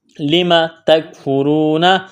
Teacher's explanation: تا اور کاف کو باریک کرنا ہے